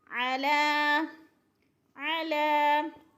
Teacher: لام کے اوپر کھڑی زبر ہے، ایک الف کے برابر کھینچ کر پڑھنا ہے۔